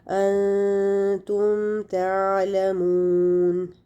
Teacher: हमने गुन्ना नहीं करना बल्कि मीम को उसके मखरज से अदा कर देना है